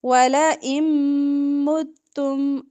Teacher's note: ولئن نون ساکن کے بعد میم آ رہا ہے تو ادغام ہوگا غنے کے ساتھ